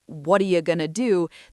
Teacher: The underlying stress pattern holds the whole utterance together in what are you going to do, the stress still falls on what and do or perhaps on going to. the structure is still there.